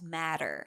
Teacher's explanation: Yes, that's a very that's a typical American accent. The T in the middle is pronounced as a soft D sound.